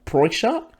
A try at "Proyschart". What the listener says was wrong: Genuinely, that is pretty close. Ideally, if you are able to, you roll the R like the back of the throat. That Proyschart.